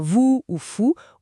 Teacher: le son o u ou comme vous ou fou où les lèvres sont aussi rondes mais moins tendues